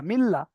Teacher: লামের উপর তাজদিদ দুবার পড়তে হবে